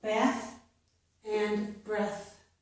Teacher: TH at the end of words is usually pronounced with the voiceless sound for most words.